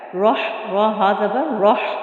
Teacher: را کے اوپر چونکہ زبر ہے اس لیے اس کو ہم پر موٹا پڑھیں گے